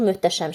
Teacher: h-t birləşməsində h-d kimi tələffüz olunur. Yəni, t keçir cingiltili qarşılığına.